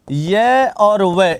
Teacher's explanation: य और व इन दोनों के उच्चारण में भी क्या नहीं करना पड़ता संघर्ष नहीं करना पड़ता इसीलिए इन्हें अर्ध स्वर भी कहते हैं यह क्या कहलाते हैं